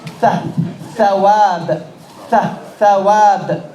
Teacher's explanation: Tip of the tongue is between the top and bottom teeth.